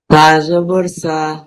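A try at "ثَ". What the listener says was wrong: আরেকটু নরম হবে, সাটা আরেকটু নরম হবে। সা জবর সা,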